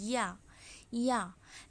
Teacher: زبان کا بیچ والا حصہ جب تالو کی طرف اٹھائیں گے تو یا ادا ہوگا